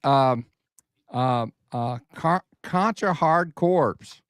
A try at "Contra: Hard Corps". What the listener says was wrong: did you say corpse? Contra Hardcore. The PS is silent. It's not a corpse.